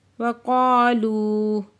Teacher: قاف پہ علی مدہ دو حرکت کھینچ کے پڑھیں گے، لو پہ واو مدہ دو حرکت کھینچ کے پڑھیں گے۔